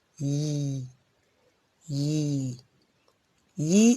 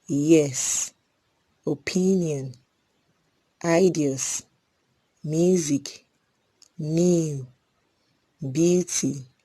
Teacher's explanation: lastly we have the palatal semi vowel yi yi yi is a voice palatal semi vowel sound examples